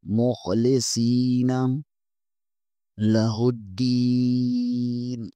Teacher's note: صاد زیر کے آگے یا مدہ ہے، اسے ایک الف کے برابر کھینچیں گے. مخلصین لہ الدین آگے بھی دال زیر کے آگے یا مدہ ہے، اسے بھی ایک الف کے برابر کھینچیں گے.